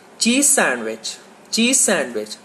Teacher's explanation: when you say z at the end of cheese, your tongue is behind the top teeth